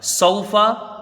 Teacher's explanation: یہ آیت دیکھیے، آیت نمبر 3، کلا سوف تعلمون، کلا ایک الف کی یہاں مقدار رہے گی، کاف کو جلدی پڑھا جائے گا، الف مدہ ہے۔ سوفا، اس میں واو لین ہے، حروف مدہ سے کچھ کم، اس کو کھینچ کے پڑھا جائے گا